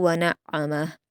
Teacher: वक्फ़ करते हुए आपको हा की उल्टा पेश को साकिन में बदल देना है।